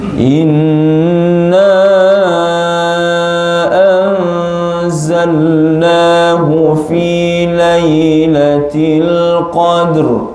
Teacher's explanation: pastikan ra di hujung ada bunyinya, ada bunyinya, naikkan bahagian lidah ke langit.